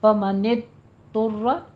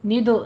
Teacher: ضاد کو آپ نے زبان کی کروٹ اوپر لگانی ہے اپنی داڑھوں کے ساتھ، پر آواز کے ساتھ پڑھا جائے گا۔